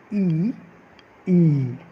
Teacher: इसमें तालव्य अर्थात जो हमारा जीभ के ऊपर का भाग है वहाँ पर थोड़ा सा जोर पड़ता है, तो इसे तालव्य स्वर कहा जाता है।